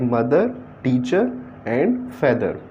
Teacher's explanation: this is very very short ah sound this is called schwa